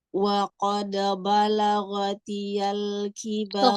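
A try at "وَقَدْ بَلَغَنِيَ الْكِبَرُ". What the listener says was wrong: Ghaniyal, bukan ghatiyal. Nun, ghaniyal.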